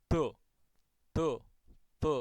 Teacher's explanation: Akhirnya di situ nanti malah justru keluar huruf dal yang ditebalkan begitu atau ditafkhim